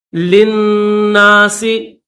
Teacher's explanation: یہ جو دوسرا لام ہے اس لام کو نہیں پڑھیں گے، پہلے لام کو دوسرے نون کے ساتھ ملا دیں گے